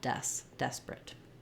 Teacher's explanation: No long clear syllables except for my stress syllable des